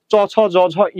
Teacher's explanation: এই শক্ত তালু থেকে মূলত চ ছ জ ঝ ইয় ধ্বনিগুলো উচ্চারিত হয়